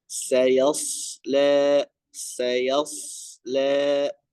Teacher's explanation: huruf sh di sini ya ditebalkan ya huruf sh dan juga memiliki sifat safir